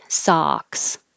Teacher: the vowel is ah so open the jaw and the lips are straight